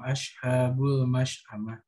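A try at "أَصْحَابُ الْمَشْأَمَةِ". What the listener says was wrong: Gimana ashabu? Gimana? Itu bukan shin, itu sod. Ashabu. Itu sod, bukan shin, bukan ash, bukan ash. Tapi kayak sod, kayak kalau gitu ya. Itu sod. Walladzina kafaru bi ayatina hum ashabu gitu.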